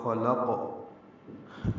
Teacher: ربک الذی خلق، خا قاف دونوں پر ہیں، خا کو جلدی پڑھیں گے، لام کو قاف سے ملا دیں گے، وقفاً قاف ساکن پہ قلقلہ ہوگا